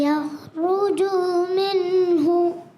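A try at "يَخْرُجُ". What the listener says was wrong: یخرجو کو کھینچنا نہیں. یخرجو.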